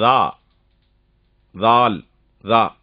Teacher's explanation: நுனி நாக்கு மேல இருக்கிற முன்பல்ல படுறது மாதிரி தாவ சொல்லணும்